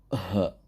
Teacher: Huruf H itu huruf halqu atau huruf halqi atau huruf halak yang biasa disebut. Ketika menyebutkan huruf H, itu posisi suara itu ada di tenggorokan. H. Dan tekanannya itu lebih kepada tempatnya itu tenggorokan. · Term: makhraj halqi